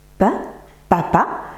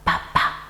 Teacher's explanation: je peux le dire en chuchotant, papa, c'est un phonème sourd